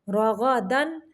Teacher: غین کو بھی موٹا پڑھیں گے اور دن پہ صرف تنوین کو ظاہر کریں گے، اظہار کا قاعدہ ہے۔